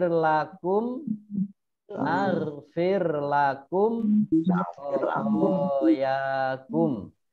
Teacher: Ini mim sukun bertemu dengan kho dibaca jelas, namanya izhar safawi.